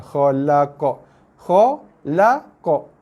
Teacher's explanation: Yang tak ada sabdu jangan ditekan-tekan. Terus direct bunyi qalqalahnya. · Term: qalqalah kubra